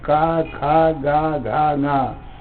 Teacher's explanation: ये पांचों अक्षर भी देखो सीधे कंठ से मुख के बाहर निकल रहे हैं, कहीं टच नहीं होता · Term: कवर्ग